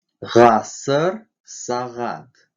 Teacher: Звонкий заднеязычный. При произнесении этого звука задняя часть языка смыкается с задней частью неба, образуя щель, через которую выходит поток воздуха с участием голоса.